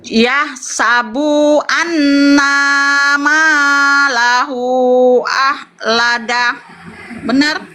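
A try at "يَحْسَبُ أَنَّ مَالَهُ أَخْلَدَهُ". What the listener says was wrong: Masih panjang mungkin yahsabu annama. Coba pelan-pelan. Yahsabu yahsabu annama, langsung annama.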